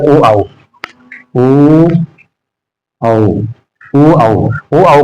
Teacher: फिर इसके बाद ओ औ उ औ ओ औ ओ औ का स्थान देखोगे तो कंठ और ओष्ठ से बोला जा रहा है